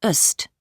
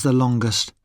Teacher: We say the in superlatives with a weak sound, the, when the following adjective starts with a consonant. We say the ending est with a schwa sound, ust.